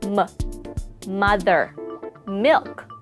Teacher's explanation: To pronounce the sound m, press your lips together and make a voiced humming sound, releasing the air through your nose